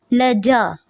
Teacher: جیم کے ساتھ چ کی ساؤنڈ نہیں دینی، یعنی ج نہیں بولنا کہ چے والی ساؤنڈ آئے